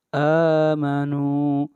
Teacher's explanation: حمزہ کے اوپر کھڑی زبر ہے، اس کو 1 الف کے برابر کھینچ کر پڑھیں گے